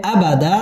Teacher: দুই জবর বামে ওয়াকফ এক আলিফ টান দিয়ে ওয়াকফ করতে হবে